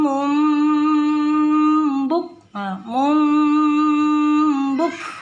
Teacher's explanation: Jadi dari sini mim tasdid harus dibaca dengung, wajibul gunnah digunnahkan. Kemudian perpindahan dari tanwin ke ba karena iqlab, jadi bacaan juga berturut-turut dibacanya dengung, dilamakan bacanya.